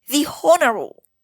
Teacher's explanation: So here, as we can observe, the word honorable is spelled with H, but the H is not sounded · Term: silent H